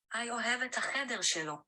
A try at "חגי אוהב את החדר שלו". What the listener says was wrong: We need Hagi, not Hi. Notice how they pronounce Haggai.